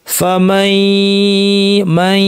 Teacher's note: দ্বিতীয় ইয়াটা বলার সময় কিন্তু গুন্না শেষ, দ্বিতীয় ইয়া গুন্না না। অনেকে ভুল করে পুরোটাই নাক নিয়ে আসেন, অনেকে এইভাবে পড়েন, এটা ভুল। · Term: বর্ধিত গুন্না